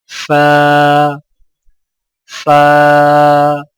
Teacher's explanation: فا کی ادائیگی میں سامنے والے اوپر کے 2 دانتوں کے سروں کو نچلے ہونٹ کے گیلے حصے پر لگا کر باریک آواز میں پڑھیں